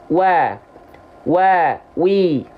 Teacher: Waw itu kedua bibirnya dengan posisi maju seperti mengucapkan huruf U. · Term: huruf waw